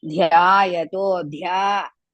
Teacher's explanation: dha is half, ya, dha is big dha, so it's mahaprana.